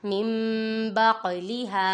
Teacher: ادھر دیکھیں نون سکین کے بعد حرف با آ رہا ہے، ادھر اقلاب ہوگا، یعنی نون سکین تنوین کو میم سے بدل کر اخفا کریں گے، یعنی گنہ کر کے پڑھیں گے۔ آگے دیکھیں قاف ہے، قاف حروف قلقلہ میں سے ہے اور یہ ساکن ہے، ادھر قلقلہ خوب ظاہر ہوگا۔